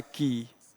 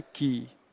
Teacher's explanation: यदि क में आप लघु ई को मिलाते हैं तो इससे बनता है की, और यदि इस क में आप दीर्घ ई को मिलाते हैं तो ये बन जाता है की